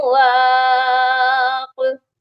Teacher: واق پر میں نے ساکن والا قلقلہ کیا ہے، وہاں پر بڑا ڈھیلا سا قلقلہ کیا گیا ہے کیونکہ وہاں پر مشدد کا سائن نہیں ہے